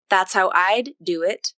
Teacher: This is the one with the released D in the word I'd. That's how I'd do it.